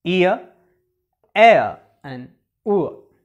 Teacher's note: In these 2 sounds, the tongue moves in the position of a back close vowel, so we call them retracting diphthongs. In the case of centering diphthong, the tongue moves in the position of the central vowel A.